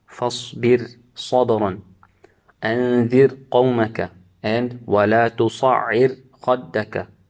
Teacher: the Ra will be read with tarqiq, because the letter of isti'ala following it is in the next word